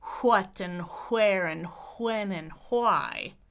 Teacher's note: adding a little h sound in question words because that's the spelling. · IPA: /ʰwʌt/